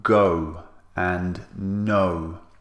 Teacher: symbols for the sound o as in go and know so this sound is made with rounded lips and is two vowels squeezed together so this is called a diphthong it's when two vowels are